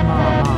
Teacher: the neutral tone is light and quick